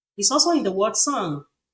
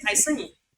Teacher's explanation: you see that you can't hear the last sound the the G sound